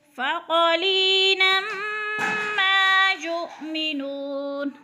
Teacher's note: فَقَلِيلًا مَا يُؤْمِنُونَ، ما کے اوپر الف مدہ، الف خالی سے پہلے میم کے اوپر زبر ہے تو الف مدہ یعنی ایک الف کے برابر کھینچ کر پڑھنا ہے